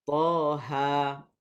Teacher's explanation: Mad tabi'i kebiasaannya dua harakat. Maka ha ni dibaca dengan dua harakat. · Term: Mad tabi'i harfi